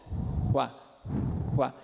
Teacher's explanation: É como se fosse um U surdo, só que mais tenso.